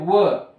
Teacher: व का उच्चारण करते समय दोनों ओठ चिपकते व यानी इस कारण इनका ओठ से उच्चारण होता है और उन्हें ओष्ठ वर्ण भी कहा जाता है। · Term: ओष्ठ्य वर्ण